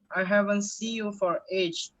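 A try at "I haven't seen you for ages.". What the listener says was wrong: Yes, and then this ages with the S. Yes, when there is yes with the S, it's gonna be totally different when you pronounce it.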